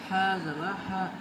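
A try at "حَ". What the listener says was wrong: हा नहीं बोलना है इसमें, ये छोटी हा है, दो चश्मी हा है, तो इसको सिंपल हा बोलना है।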